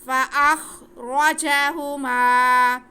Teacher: فَأَخْرَ، آگے جیم پہ بھی زبر، ہا پہ پیش اور میم پہ زبر، لیکن میم کے ساتھ ہمارے پاس الف ہے تو یہ الف مدہ ہو گیا، الف سے پہلے زبر ہوتا ہے الف مدہ ہوتا ہے، میم کو ہم کھینچ کے پڑھیں گے۔